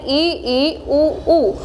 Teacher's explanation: सारे स्वरों में सबसे कम जो मुख खुलता है वो संवृत में खुलता है